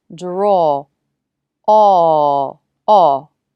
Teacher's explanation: when the ah vowel is followed by r the tongue is further back and the lips round more than when the ah vowel is not followed by the r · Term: ah plus r combination, aw plus r combination